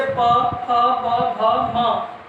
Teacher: हमारे दोनों ओष्ठ सट जाते हैं बोलते समय, ठीक है फ्रेंड्स, बंद हो जाते हैं वहाँ पे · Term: प वर्ग